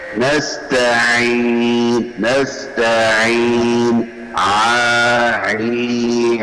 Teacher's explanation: آپ نے زبان کی جڑ کو گلے کی طرف دبا کر عین کو واضح ادا کرنا ہے